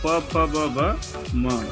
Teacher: ओठ से बोले बोले जाने वाले वर्ण प वर्ग